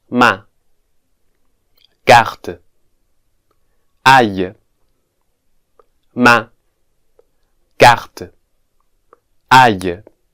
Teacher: As we can see, this vowel sound is pronounced with the mouth very open.